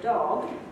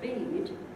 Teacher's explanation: surrounded by other voiced sounds so the d in the word dog and the d at the end of the word bead are partially de-voiced there isn't a great deal of voice in those two sounds